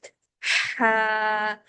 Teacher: इसके हा के साउंड के साथ एक हवा का शोर बाहर निकलता है और गले के अंदर से फील होता है